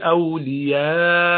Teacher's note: you stop at Hamza when it's silent with a jerk